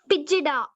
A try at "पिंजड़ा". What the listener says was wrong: पिजड़ा नहीं, और ऊपर अनुस्वार है, ई के ऊपर अनुस्वार है। पिंजड़ा अनुस्वार रहे तो ना का ना का उच्चारण पिंजड़ा पिंजड़ा।